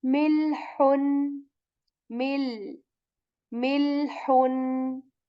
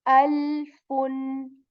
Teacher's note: The sound should not bounce back on lam. We say milhun, mil.